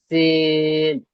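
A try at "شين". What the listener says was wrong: শিন, এই শিনের উচ্চারণটা আসছে না। প্রথমটা হবে সিন, দ্বিতীয়টা হলো শিন। শিন, শিন বলার সময় মুখ থেকে একটু হাওয়াটা বেশি বার হবে। শিন।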